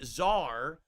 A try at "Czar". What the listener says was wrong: You don't have to say it like that. It's Czar, not Czar. puts the emphasis on all three letters. You're supposed to put the emphasis on a single vowel.